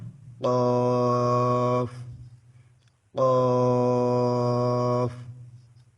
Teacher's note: পাঁচ number মাখরাজ জিবার গোড়া থেকে একটু আগে বাড়িয়ে তার বরাবর উপরে তালুর সঙ্গে লাগিয়ে ওখান থেকে কাফ উচ্চারিত হবে।